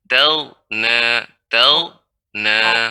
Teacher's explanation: Amma man istaghna, tidak boleh memantul, bukan taghna.